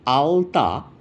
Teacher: কিন্তু যখন বলবে আলতা তখন দেখবে ল যখন উচ্চারণ করছো তখন জীবটা দাঁতে ঠেকছে। সামনের দিকে চলে আসছে।